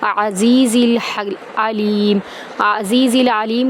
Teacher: میں داخل کریں گے، را کو پر کریں گے، عزیز العلیم، عزیز العلیم کا عین دونوں عین وسط حلق سے ادا کریں گے